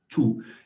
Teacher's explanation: So two, because your mind is anticipating a rounded element, so it starts the rounding very early at the level of t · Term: labialization